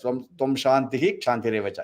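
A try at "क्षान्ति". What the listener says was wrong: So you should not say Tom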